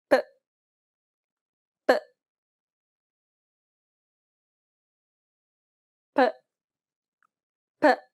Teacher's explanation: this is also an unaspirated P sound, meaning there shouldn't be a burst of air as you pronounce the sound